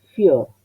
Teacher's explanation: Yo veo que esta O es cerrada, porque el acento es agudo. Entonces dejo tal cual como está aquí.